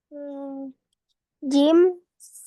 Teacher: yang keluar dari tengah lidah bertemu dengan langit-langit Tengah